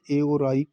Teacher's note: ए और आई कंठ तालू से बोले जाते हैं